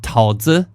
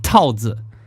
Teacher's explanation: He wanted to say, "I ate a peach." But instead of saying 桃 子, he said 桃 子, right? 桃 子 is peach with a rising tone, and 桃 子 with a falling tone is not a peach. So instead of saying I ate a peach, he said I ate a condom.